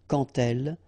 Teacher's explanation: when you will have this d, you will phonetically pronounce it like t